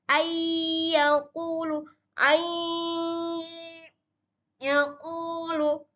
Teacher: Maka tanda-tanda syarat dengung sudah terpenuhi, suara itu masuk ke dalam rongga hidung.